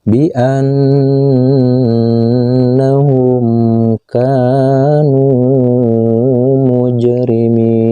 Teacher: ini adalah huruf jim yang berbaris sukun dan harus dipantulkan membacanya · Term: qalqalah sugro